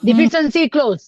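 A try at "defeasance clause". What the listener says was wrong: Defeasence clause. Not deficiency. Defeasence.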